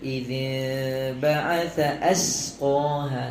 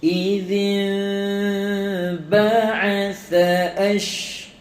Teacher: Tha nipis, keluarkan lidah sikit. Sya tebal.